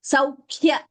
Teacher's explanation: Again here K is doubling. Dvitvam. Saukhya. K is Mahaprana.